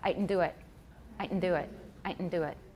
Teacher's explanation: it's a nasalized glottal stop